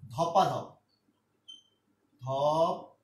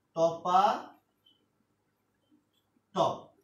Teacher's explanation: মাঝখানে একটা আকার অতিরিক্ত চলে আসছে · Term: অসমীকরণ